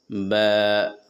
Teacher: दोनों होठों को बंद करें। फिर हल्का सा खोलते हुए ब अदा होते हैं।